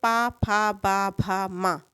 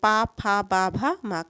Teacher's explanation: ओट ध्वनियां वे ध्वनियां है जो दोनों ओठों के मिलने पर उच्चरित होती हैं